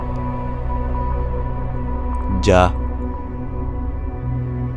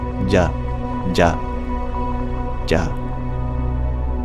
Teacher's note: it is the unaspirated, voiced palatal sound. So palatal is formed by bridging our tongue towards our soft palate. · So palatal is formed by bridging our tongue towards our soft palate. Non-aspirated means we don't make it breathy. And voiced means we give it voice before we release it. So that would be ja.